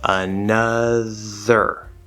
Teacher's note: the lip part of the er sound is optional it's often used and it's very natural but it's not required for the sound so whether you use the lips or not it doesn't matter